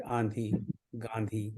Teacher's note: तो जब चंद्र बिंदु होता है तो इसका अर्थ सिर्फ यही है कि अब वो शब्द या व्यंजन तो स्वर तो वही है, पर वो नाक से बोला जा रहा है